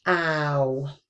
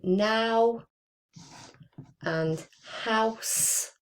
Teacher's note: we do not produce a W when we're just using that one syllable now. Okay.